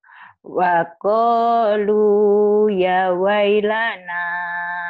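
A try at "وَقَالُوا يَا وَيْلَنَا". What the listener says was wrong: Ya-nya kalau udah gini panjang Bu. Ya-nya panjang.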